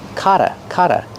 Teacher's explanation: The double t makes a fast d.